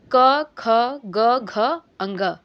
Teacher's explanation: कंठ से जो है पूरे क वर्ग का उच्चारण करते हैं। क वर्ग कहने का मतलब कि क, ख, ग, घ, अंग, है ना।